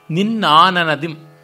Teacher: ಅದು ಇಂಪಾದ ಅನುನಾಸಿಕ. ಅದರೊಳಗೂ ದಂತ್ಯವರ್ಣದ ಕೊನೆಯಲ್ಲಿ ಬರುವ ಅನುನಾಸಿಕ. ಮೂರ್ಧನ್ಯದ ಣ ಅಲ್ಲ, ದಂತ್ಯದ ನ. ಹೀಗಾಗಿ ಕಠೋರತೆ ಅನ್ನುವುದಿಲ್ಲ.